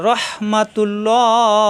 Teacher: এখানে আল্লাহ শব্দের ডানে পেশ আসছে এজন্য আল্লাহ শব্দ মোটা হবে